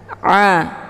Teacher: Ain dia tempat keluarnya dari tenggorokan bagian tengah Aa dibacanya lunak ya Aa bukan a Jangan dibaca UAT UAT